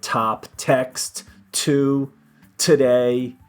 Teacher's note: We blow a lot on the T.